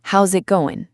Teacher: The S in is sounds like a Z, and we completely drop the letter G at the end of the word going.